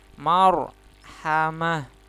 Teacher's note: Ro-nya menjadi tebal karena harokat sebelumnya fathah ya. Marhamah. Marhamah, mahnya taknya disukunkan jadi seperti hak sukun ya.